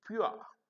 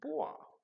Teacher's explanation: the sound is generating at the back vowel and it is ending at the place of center vowel a